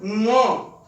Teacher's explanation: गले से और नाक से हो जा रही है ङ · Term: ङ ध्वनि